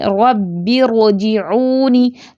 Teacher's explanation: اور جب ہم اکٹھے پڑھیں گے ربی ارجعونی تو یہ را ساکن پور پڑھیں گے